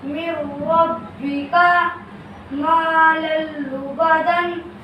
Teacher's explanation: اگر ان 2 حرفوں میں سے کوئی حرف نون ساکن یا تنوین کے بعد آ جائے تو تنوین یا نون ساکن ادغام بلا غنہ کے حرف سے مل کر جلد پڑھا جائے گا، نہ کھینچے گا، نہ غنہ ہوگا